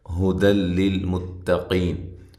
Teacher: یہ جو ہے تنوین کا ادغام ہے لیکن بلا غنہ ہے، غنے کے بغیر ہے